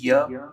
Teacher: जीभ मुंह के किसी भाग को पूरी तरह स्पर्श नहीं करती है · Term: अंतस्थ व्यंजन